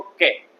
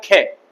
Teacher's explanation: अरे तो बोल सकते हो ना के, मतलब हमारी जो प्राणवायु है वो इतनी मात्रा में बाहर नहीं निकलती है। लेकिन जैसे ही आपने खे का उच्चारण किया, इसका मतलब आपकी जो श्वास है वो बाहर ज्यादा मात्रा में निकलती है